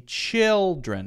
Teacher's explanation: chill is the stressed syllable not Tren